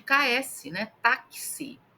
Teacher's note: A palavra táxi na pronúncia dela tem aí o X, tem o som de ks, né, táxi. E aí a gente tem quatro letras e cinco fonemas.